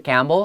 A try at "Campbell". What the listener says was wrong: 不是 Campbell, 这个 P, it's draw an X there. And the E sounds more like a short I, Campbell.